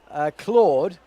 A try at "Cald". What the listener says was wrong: I think he's been saying cowed, not Claude.